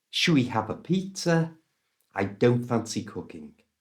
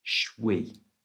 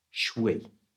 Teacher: the shall and we have been squashed together and become shwe